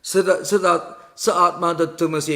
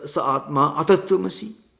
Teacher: So, according to some Dvaita philosophers, if you pronounce this, sa atma tattvamasi, etc., sa atma tattvamasi, you can also pronounce sa atma atattvamasi. It's a long vowel that comes after ma. It can be added to tattvamasi, so it becomes atma tattvamasi, atma atattvamasi.